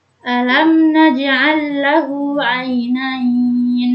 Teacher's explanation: Ketika ada mim sukun bertemu dengan huruf selain mim dan ba, berarti dihukumi dengan izhar syafawi, yaitu cara membacanya yaitu dengan jelas, bukan mendengung.